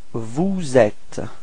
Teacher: you should do the liaison, so this small link between the S and the E, so you get vous êtes.